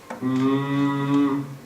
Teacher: la diferencia es que el aire en la m Sale por la nariz